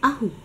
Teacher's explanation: Notez que 'ahu signifiant vêtement est précédé d'un accent glottal